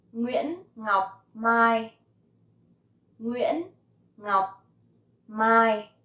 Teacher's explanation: So Nguyễn has dấu ngã, Ngọc has dấu nặng, and Mai has no tone.